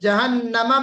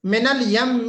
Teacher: غنہ کرنا ہے، اور 2 حرکت کے برابر بہت قاعدے سے غنہ کرنا ہے، کیونکہ یہ صفت لازمی میں سے جو ہے یہ چیز آتی ہے.